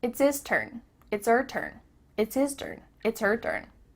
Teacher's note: The H at the beginning of his and her is cut off.